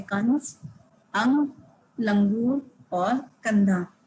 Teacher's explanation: इसके उच्चारण में जब हम इसे बोलते हैं तो हवा केवल नाक से निकलती है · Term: अनुस्वार